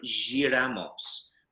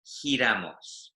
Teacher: a G followed by an I in this context is an H sound